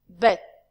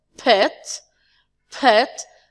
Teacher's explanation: the B sound is voiced because our vocal cords vibrate